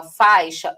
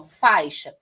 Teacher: O A e o I são falados quase que juntos, ó, faixa. E aí você vai ver que o A é a vogal e o I é a semivogal, porque o I aqui tem um som mais fraco, né?